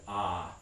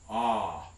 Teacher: if you make an exaggerated version of that vowel ah you can probably feel your tongue root doing something that's a pharyngeal constriction